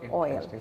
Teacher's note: It is neither in the category of long vowel or a short vowel, but a special vowel sound as OI, like in the word oil.